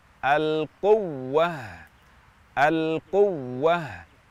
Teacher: Misalnya waktu kita membaca kata al-quwwah, huruf waw bertasydid, maka kita nabr, kita naikkan intonasi kita lebih tinggi daripada huruf yang lainnya dan ada tekanan lebih dibandingkan dengan huruf yang lainnya untuk memperjelas bahwa huruf waw ini bertasydid. Al-quwwah, agar tidak terkesan waw ini adalah huruf maddiyah, sehingga kita baca al-quwwah, al-quwwah.